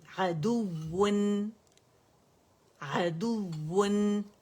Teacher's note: आवाज की पिच को रेज करना है और दो वावें शो करना है और कंप्लीट रोलिंग करनी है लिप्स की